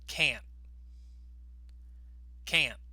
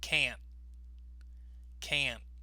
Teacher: in sentences, can't is usually said with a clear vowel sound. So that's that ah sound that you hear.